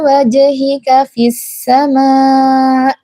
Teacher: Ini adalah mad wajib mutasil yang panjangnya 6 harokat karena ia sedang keadaan waqaf, ya, keadaan waqaf jadi panjangnya 6 harokat.